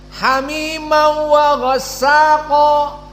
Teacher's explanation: Namun bila gunnah, hamimau wa ghassaqa, tidak panjang di wawnya, tidak ada gunnah. Dan makhrajnya bukan dari hidung khaysum, tetapi makhrajnya dari bibir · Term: idgham bila gunnah